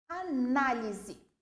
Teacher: Análise, a sílaba tônica é o na, nesse caso